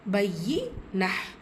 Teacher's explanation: யா ஷத்தா இருக்குது, அழுத்தம் கொடுத்து ஓதணும்